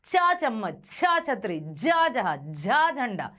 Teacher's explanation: तो ये आते हैं आपके तालु से। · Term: चा वर्ग